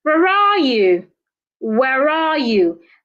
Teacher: So because it's a WH word, at the end of such question, my tone should fall. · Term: falling tone